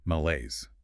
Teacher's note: 2 syllables. Stress on the second. Sounds French.